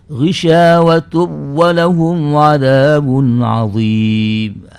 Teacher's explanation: riwayat khalaf itu harus dibaca dengan idgham tanpa disertai ghunah